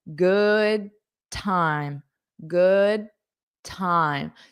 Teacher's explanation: So you don't have to pronounce that d.